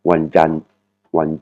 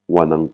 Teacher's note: On voit bien la voyelle longue sur la dernière syllabe.